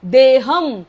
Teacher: ह च्या वरचा अनुस्वार पुढे प असल्यामुळे म बोलायचा आहे